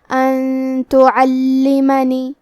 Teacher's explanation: تا حروف الاخفاء میں سے ہے اور اخفاء کا معنی ہے چھپا دینا، تو ہم نون ساکن کو چھپاتے ہوئے اور غنہ کے ساتھ یہ حکم کو ادا کریں گے